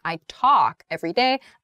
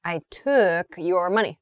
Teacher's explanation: talk is much more open